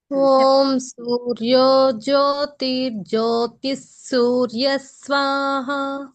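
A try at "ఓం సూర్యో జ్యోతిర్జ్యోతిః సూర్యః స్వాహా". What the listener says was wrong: ఇక్కడ రు అంటున్నారు, స్ అనండి. జ్యోతిస్.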